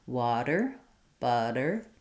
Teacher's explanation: Other languages use it for R. It's one roll of a rolled R. My tongue is tapping up and dropping down. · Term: flap T